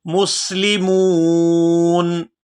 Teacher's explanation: یہاں پر وقف کریں گے تو وقف کی صورت میں نون جو ہے یہ ساکن ہو جائے گا